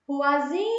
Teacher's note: O zi é a sílaba mais forte.